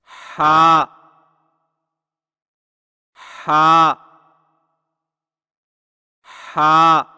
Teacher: حلق کی طرف مضبوطی سے دباتے ہوئے باریک اور رگڑ کھاتی سانس میں پڑھیں، یعنی ہا ہا ہا۔